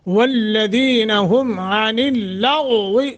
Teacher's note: غین اور واد دونوں موٹے